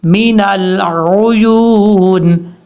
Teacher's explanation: یا کے بعد جو واو ہے یہ واو مدہ ہے، واو مدہ کی وجہ سے اس کو لمبا کریں گے 1 الف کی مقدار